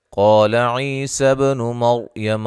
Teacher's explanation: قاف کو موٹا ادا کریں گے، الف مدہ ہے، عی مدہ ہے، با پہ قلقلہ ہے، مر را کو موٹا ادا کریں گے، را ساکن سے پہلے زبر ہے۔